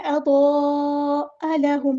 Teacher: حمزہ کی آواز کو واضح ادا کرنا ہے، لام باریک پڑھیں گے، ہاں سمپل ادا کریں گے۔